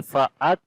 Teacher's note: Hamza we connect with the kaf, and in the kaf there is shiddat quality and also hams quality